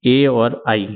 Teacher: उच्चारण स्थानों का प्रयोग होता है वह है कंठ तालू इसमें कंठ और तालू की सहायता से बोले जाते हैं यह वर्ण है ए और आई यह आपको ध्यान रखना है